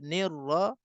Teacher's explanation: Hirra, ra ada sabdu, kita nak kena tekan ra tu